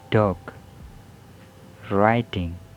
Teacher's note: There is voice alveolar stop, and the example word are dog, writing.